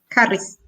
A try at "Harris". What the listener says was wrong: Harry. En anglais, on prononce Harris en anglais, non? Harris en anglais. En français, Harry, non? Répétez, je m'appelle Kamala Harry.